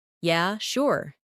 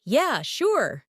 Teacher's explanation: if someone says, Yeah, sure. in a flat tone, it might mean they're not really interested. But if they say, Yeah, sure. with excitement. It's genuine agreement.